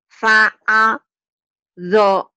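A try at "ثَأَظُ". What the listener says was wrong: fa sa bukan fa ya sa kedengarannya kayak fa sa zo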